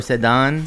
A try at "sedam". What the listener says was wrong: Sedam. Let's do Sedam with the M.